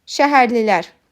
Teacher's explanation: Burda ahəng qanunu pozulmayıb, çünki ə və i saitləri incə saitlərdir.